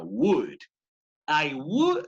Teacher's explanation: La L no debe sonar para esta palabra.